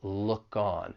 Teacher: When you're pronouncing this phrase, just keep in mind that once again, linking will occur. We can link that final c-consonant sound in look with the vowel sound in on.